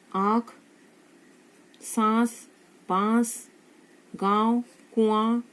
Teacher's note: जो ध्वनि है वो नाक से निकल रही है, इसलिए अनुनासिक।